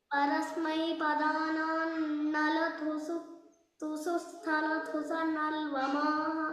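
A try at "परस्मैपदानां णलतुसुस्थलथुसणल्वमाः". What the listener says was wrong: नलतु नलतु इत्यत्र महाप्राणः नास्ति there is no महाप्राण there परस्मै पदानान्नलतु सुस्थलतु सनल्वमाः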